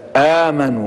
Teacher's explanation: ده يسمى مد بدل، وليس لأحد أن يمد هذا المد أكثر من حركتين إلا في رواية ورش